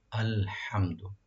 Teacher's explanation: আল হামজা, প্রথম যেটা হামজাটা আছে, হামজাটাকে স্পষ্টভাবে আপনারা ইউজ করবেন, পারফর্ম করবেন গলা শেষ থেকে। আল হা যেটা আছে, এখানে হা, ওইটা গলা মাঝখান থেকে হা, আল হা।